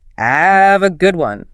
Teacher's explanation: notice how the H in have often disappears